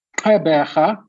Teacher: the q indicates a hard click. And the rh is a guttural sound.